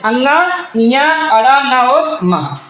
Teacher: अनुनासिक नासिक का मतलब होता है जिनके उच्चारण में नाक व मुंह दोनों का प्रयोग हो